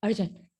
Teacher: consonant आर नहीं pronounce होता, मतलब बहुत स्ट्रांगली प्रोनाउंस नहीं होता जब उसके बाद कोई कॉन्सोनेंट साउंड हो